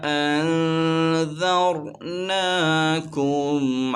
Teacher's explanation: نون ساکن کے بعد ذال آ رہا ہے، اخفا کا قاعدہ ہوگا، غنہ کریں گے۔ را ساکن سے پہلے زبر آ رہا ہے، اسے موٹا پڑھیں گے